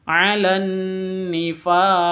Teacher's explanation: qofnya menjadi sukun maka menjadi huruf Qalqalah tandanya sukun Qalqalah itu berarti dipantulkan Alan Nifa seperti itu kenapa karena qolqolah kubro ada di akhir